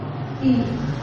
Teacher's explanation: ई हमारे जिह्वा का अगला जो हिस्सा है वो ज्यादा सक्रिय होता है बजाय और अवयव। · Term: अग्र स्वर